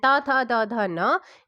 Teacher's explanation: त थ द ध न इसका होता है दंत से